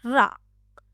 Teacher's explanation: जीहवा को दो-तीन बार कंपन करना पड़ता है। · और लुंठित या प्रकंपित व्यंजन क्या है? जिह्वा को 2-3 बार कंपन करना पड़ता है